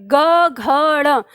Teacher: जो सघोष है, जब हम इन वर्णों का उच्चारण करते हैं तो हमारे स्वर तंत्र में कंपन होता है बहुत ज़्यादा